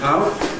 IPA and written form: aʊʔ (out)